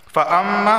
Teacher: اگر اس کو ملا کر پڑھیں گے تو متشابہاتوں پہ غنہ ہوگا، متشابہاتوں اس طرح۔ فاما، میم پر بھی تشدید آ گئی تو یہاں غنہ ہوگا